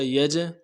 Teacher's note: یجعلون جیم میں قلقلہ ہوگا